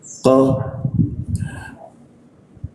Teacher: Qa masuk ke qa, di siku tenggorokan, lidahnya dinaikkan sehingga rongga udara terkunci ya.